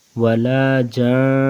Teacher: وقفاً میں بھی نون کے اوپر غنہ کریں گے کیونکہ نون کے اوپر شد ہے